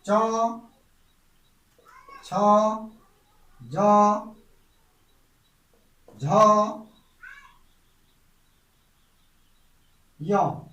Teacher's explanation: चौ वर्ग का उच्चारण बिंदु तालव्य होता है, यानी कि तालु में, हमारी ऊपर तालु में जीभ लगती है।